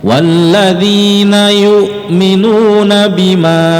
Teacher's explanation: maka dia disebut mad jaiz munfasil. Cara membacanya dipanjangkan 4 harokat.